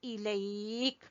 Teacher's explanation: ई को छोटा पढ़ेंगे और इसमें या लीन है